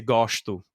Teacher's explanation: Rio is more, they'll say the S's as SH.